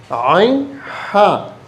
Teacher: وہ عین جس کو کوئی نقطہ نہ ہو، وہ وسط حلق سے ادا ہوتے ہیں۔ اس طرح بغیر نقطے کے جو ہا ہے، ہا، اس کو وسط حلق والے حروف خلقی کہتے ہیں، عین ہا۔